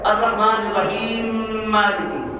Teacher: میم کو میم میں ادغام کر دیا جاتا ہے